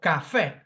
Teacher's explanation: Oxytone, it's stressed on the last syllable, it finishes in a vowel, café.